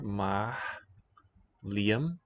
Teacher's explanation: The L is slender, the rest of the word is not.